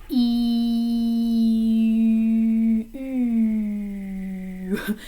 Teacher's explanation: my lips are really tightly rounded for the french hue sound and the sound is a little more forward in the mouth